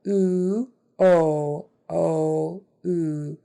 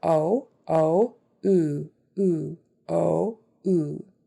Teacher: My jaw lowers more for the o